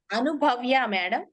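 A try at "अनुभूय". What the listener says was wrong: కాదు, భవ్య కదా, అనుభూయ.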